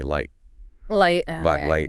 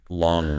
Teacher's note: for the L you want to make sure that air is Flowing around the sides